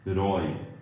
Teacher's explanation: um ditongo, vogais juntas, com O aberto